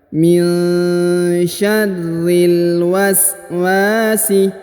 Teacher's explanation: Huruf wa dipanjangkan 2 harokat karena di depannya terdapat alif.